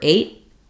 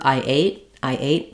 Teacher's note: we don't let that t out at the end that's typical for American English